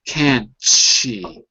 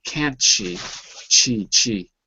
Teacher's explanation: you can almost slide the T to the she